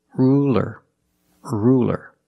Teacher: it's a light L because it's between vowels